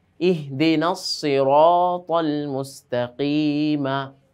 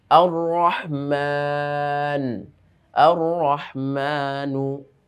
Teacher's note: রটার উপর আমরা দেখতে পাচ্ছি যে জবর এসেছে সেজন্য রটাকে মোটা করে পড়লাম